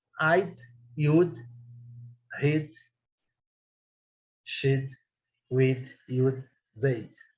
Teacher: O D é meio sumidinho, né?